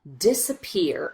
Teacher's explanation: if you notice this middle syllable, we just rush through as quickly as we can